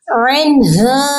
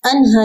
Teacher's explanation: عنہا، انہا نہیں کریں گے، عین کی ساؤنڈ نکلے گی بس حلق